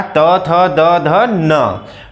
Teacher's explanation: दांत से डायरेक्टली अब वो आपकी जो जिह्वा होगी टच करेगी।